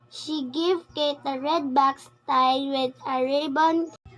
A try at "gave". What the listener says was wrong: The learner mispronounced the word gave as give, and she omitted the sound d for the word tied.